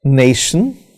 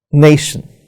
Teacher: is stressed it has two syllables nay and shin so nation in this example nay is stressed and shun is not stressed